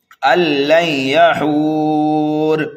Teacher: را کو کر دیا ساکن، یہاں پر ہو رہا ہے وقف بالاسکان